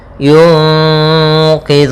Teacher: nun mati bertemu qf yaitu ikhfa Ikfa Hakiki ya caranya adalah kita samarkan suara Nun ke q y y q ya langsung ke Q kemudian qidun Zu hati-hati